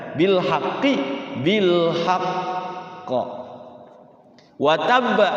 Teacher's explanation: Bilhaqi dengan wataba itu kan huruf huruf ujungnya huruf qalqalah. Nah, ketika waqaf qalqalahnya ditahan